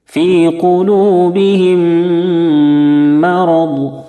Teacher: میم ساکن کے بعد جب دوسرا میم آ جاتا ہے تو پھر دونوں میم کو آپس میں ملا دیتے ہیں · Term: ادغام شفوی